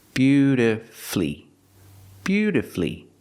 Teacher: Put the stress on the first and third syllable.